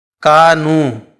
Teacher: يأتي قبل حرف (ساكن)، لذلك هنا سيتم إطالة حرف الواو بمقدار ألف واحد